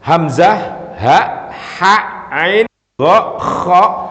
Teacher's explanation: ini mesti keluarnya dari tenggorokan sini. Cuma ada yang agak dalam ain, ada yang di tengah kha, ada yang agak apa namanya ke atas hamzah. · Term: huruf halqi